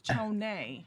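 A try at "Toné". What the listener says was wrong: Yeah, but it's not pronounced Tone. Nobody goes Tony, Tone. Wednesday, Monday, but it's not pronounced that way. When the last time they said, come to the stage, give it up for Tony. It's Tony. But no one pronounces it that way.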